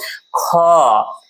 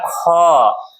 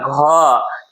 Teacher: लेकिन जरा सुनिएगा, महाप्राण वर्ण के अंग्रेजी के अंत में एच आते हैं, उसको बोलिएगा तो उसके अंत में थोड़ा सा ह के जैसा सुनने को मिलता है